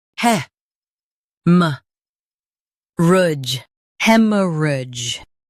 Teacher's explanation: Stress hem and keep soft. Rudge is smooth.